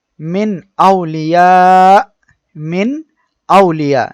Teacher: নুন সাকিনের পরে হামজা অর্থাৎ এখানে কোন গুন্না হবে না